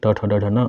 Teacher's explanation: ट वर्ग ट ठ ड ढ न और ऋ मुर्धा होते हैं